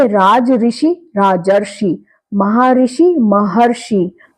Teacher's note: अ और री मिलने से अर बनता है